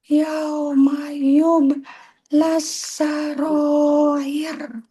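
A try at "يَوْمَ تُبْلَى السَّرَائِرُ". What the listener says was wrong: titiknya di atas. Tube. Tube.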